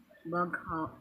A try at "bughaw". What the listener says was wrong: Bughaw, not baghaw. Bughaw. It's Tagalog. Bughaw, not bag. Bughaw.